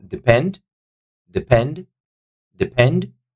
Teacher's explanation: second syllable is taking the stress